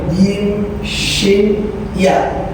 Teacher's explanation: tengah lidah dengan langit-langit